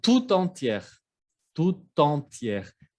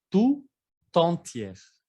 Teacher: Ven que la T se escucha en la palabra entière. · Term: liaisons